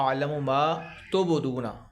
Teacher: با پہ قلقلہ کرنا ہے، یہ بلیو کلر آپ دیکھ رہے ہیں، یہاں پہ آپ نے قلقلہ کرنا ہے، با کی ڈبل آواز نکالنی ہے۔